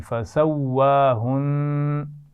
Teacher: ہم وہاں وقف تو کریں گے لیکن شد کی وجہ سے وہاں غنہ پر وقف کریں گے